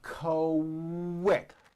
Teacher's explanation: the word quick is pronounced with a k and a strong W sound